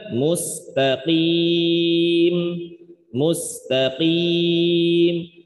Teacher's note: Huruf qaf sifatnya isti'la, tebal, tapi ketika kasroh tebalnya kurang dikit. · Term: Tafkhim nisbi